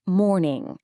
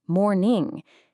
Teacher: In the UK, it's more like morning without that hard R sound. But in the US, you definitely get that R in there